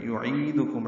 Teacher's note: عین وسط حلق سے ادا کریں گے